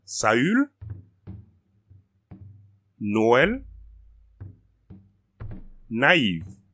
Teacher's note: It's used when two vowels that are next to each other have to be pronounced separately